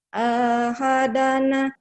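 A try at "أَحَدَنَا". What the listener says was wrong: kenapa A-nya panjang? Kenapa A-nya panjang? Ahadana, ahadana, ahadana, makanahu.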